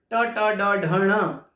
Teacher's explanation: ट ट ड ढ ण ये मूर्धा से टकराते हैं, ये मूर्धन्य ध्वनियां हैं